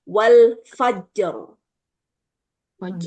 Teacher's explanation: ini jim selain qalqalah dia juga memiliki sifat yang sama dengan ta, yaitu syiddahnya itu kuat.